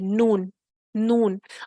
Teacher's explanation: جب ثنایا، ربائی اور انیاب کے مسوڑوں سے لگے گا تو پھر ان سے نون نکلتا ہے